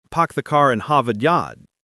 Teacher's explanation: In Boston, they also drop the final R, but they often pronounce or as ah. So car becomes ka, and park the car in Harvard Yard becomes park the car in Harvard Yard.